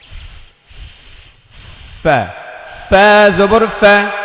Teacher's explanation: ফা তা, ফায়ে বাতাস বের করতে হবে, জিহ্বার আগা, সরি, নিচের ঠোঁটের পেট সামনের উপরের দুই দাঁতের আগায় লাগিয়ে, অর্থাৎ উপরের দুইটা দাঁত নিচের ঠোঁট, উপরের ঠোঁট না, নিচের ঠোঁটের পেটে লাগাতে হবে, মানে একটু ভিতর সাইডে।